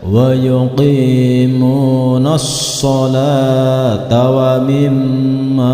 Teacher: jika diteruskan tetap ta marbutahnya tetap bersuara ta, bukan berubah menjadi ha lagi, tetapi tetap ta.